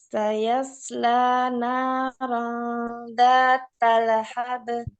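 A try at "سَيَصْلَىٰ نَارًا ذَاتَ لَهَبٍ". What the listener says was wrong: Ayo, ba'nya di sini ya karena dia qalqalah yang di mana dia qalqalah wusta, ya qalqalah yang pertengahan. Jangan sampai kita membaca seakan-akan surah zata lahab. Ini kalau misalnya b ini bukan huruf e.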